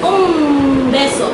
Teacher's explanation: My M is. It's bilabial, it's not N, it's M.